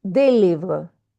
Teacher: we don't pronounce the final consonant, it's silent.